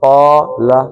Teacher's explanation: قا، زبر کے بعد کیا آیا، الف آ گیا، تو یہ کتنی حرکتیں ہو گئیں، 2۔